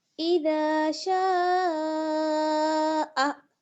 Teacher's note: मद्दे मुत्तसिल को हम कितना खींचते हैं 4 अलिफ की मिक़दार के बराबर, यानी आप अपनी मुट्ठी बंद करिए, इसका एक तरीका ये है आप जान सकती हैं आराम से बहुत ईज़िली, अपनी मुट्ठी आप बंद करेंगी और जितनी देर में आप अपनी 4 फिंगर्स ओपन कर लेती हैं, इतना टाइम हमें इसको खींचना है, ठीक है?